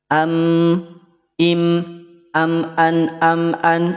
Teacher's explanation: Mim dan nun itu dari khaysum. Im, an, rongga hidung. · Gunnahnya sempurna sehingga ketika kita tutup hidung kita, ketika kita tutup hidung kita, maka dia akan terhenti karena seluruh bunyi dia keluar dari rongga hidung. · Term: gunnah yang sempurna